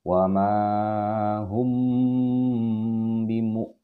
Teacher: Jadi hukum mim mati bertemu ba adalah ikhfa syafawi. Ikhfa itu artinya samar, sengau ya. Sedangkan syafawi itu artinya dua bibir. Jadi kita tahan di kedua bibir kita.